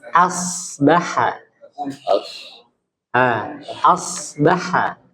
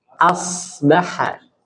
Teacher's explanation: Jadi A-nya itu tipis. Asbaha. Asbaha. Nah, ya jadi jangan sampai A-nya itu jangan O. Asbaha. Jangan os.